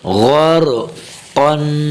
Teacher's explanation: غین بھی موٹا ہے اور را کو بھی موٹا کر کے پڑھنا ہے، اور آگے قاف کو بھی، یہ تینوں حروفات غین را قاف، ٹھیک ہے، غین بھی موٹا پڑ، جہاں بھی غین ہے اسے موٹا پڑھا جائے گا، اور جہاں بھی را ہو سوائے زیر کے، زیر آ جائے تو پھر بریک، ورنہ باقی ساری حالتوں میں را موٹی پڑی جائے گی۔